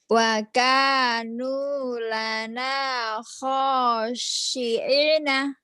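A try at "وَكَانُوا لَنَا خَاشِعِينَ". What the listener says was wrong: Wakanu jadi dinikmati, di mad itu ditekan, ditahan. Tahan dengan lembut, dengan mesra.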